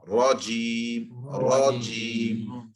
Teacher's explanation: The tongue is rising to provide the full mouth sound.